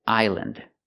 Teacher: We use the short sound, island, island. And remember, the S is silent. Don't pronounce the S.